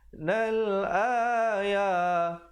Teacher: alif lam qamariyah, lamnya dibunyikan dengan jelas. Nal ayah, dibaca 2 harakat dan ya juga 2 harakat.